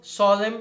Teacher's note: no ouvido é muito importante ouvirmos o acusativo com esse destaque da nasalização